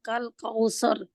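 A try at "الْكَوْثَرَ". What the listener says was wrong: कौसर आपका मोटा है रा, लेकिन थोड़ा सा और कर दे मोटा। ठीक है, इसको यानी कि इसकी प्रैक्टिस थोड़ी मोटे की करें, और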